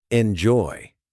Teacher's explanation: The stress is on joy, not enjoy. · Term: Word stress